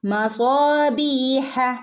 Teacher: യാ മദ്ദിനും നമ്മൾ 2 ഹറക്കത്താണ് നീട്ടുന്നത്.